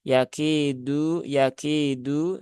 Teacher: huruf Dal itu dia bukan Hames Tapi dia itu adalah jahr